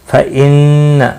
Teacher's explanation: फ़इन्न, नून मुशद्दद पर गुन्ना होगा।